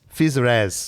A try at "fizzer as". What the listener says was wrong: There's a space in there.